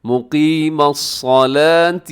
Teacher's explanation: مقیمہ قاف موٹا پڑا جائے گا، صلاۃ میں صاد موٹا پڑا جائے گا